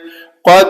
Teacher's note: دال کے اوپر کلکلا کریں گے